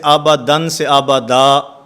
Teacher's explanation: 2 زبر والی تنوین وقف کی حالت میں الف سے بدل جاتی ہے